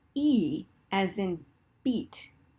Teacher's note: E means your tongue is really high, you see that? And really forward in your mouth. And I is a little further back and a little down, okay?